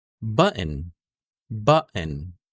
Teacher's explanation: I'm dropping the O sound. So from the T sound, we immediately go to the N sound.